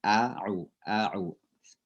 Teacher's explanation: Ain itu di tengah tenggorokan kita.